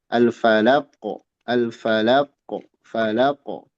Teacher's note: dari lam ke qf ada hentakan. Walaupun hentakannya ya tentu enggak enggak berlebihan ya. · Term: qalqalah